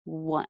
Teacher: My tongue is pulled back and down. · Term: schwa